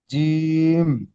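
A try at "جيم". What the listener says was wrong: তাহলে মাঝখানে উচ্চারণ মানে টানটা হবে জি, ইম। একটু বেশি করে টান করতে হবে। এখানে কত লেখা রয়েছে? 3 আলিফ টান দিয়ে পড়তে হবে, তাহলে ঠিক আছে, জিম।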